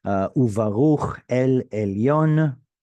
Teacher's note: The conjunctive vav has now changed to u because of the bilabial bet that has followed.